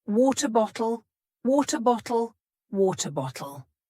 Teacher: it uses the T changing to a d · we have a t between two vowel sounds and it's changing to a d it's not a t sound it is a d this also